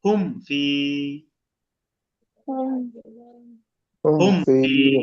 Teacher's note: গুণনা ছাড়া পড়বেন, কারণ মিম সাকিনের পরে বা মিম নাই, এটা ফা